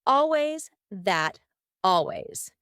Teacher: done but it's often done when native speakers are talking quickly we link together words by making the final T change into a d